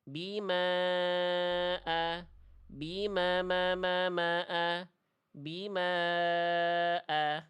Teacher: Bima di sini empat atau lima. Berarti seperti kadar melafalkan ma sebanyak empat kali.